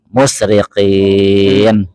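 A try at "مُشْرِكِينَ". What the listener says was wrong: Biasa huruf kaf, musyrikin. Kak.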